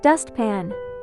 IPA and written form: 'dʌstpæn (Dustpan)